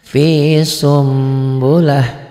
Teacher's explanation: Di sini ada mim kecilnya tuh. Fi sun, n-nya bunyi nun matinya berubah menjadi m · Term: iklab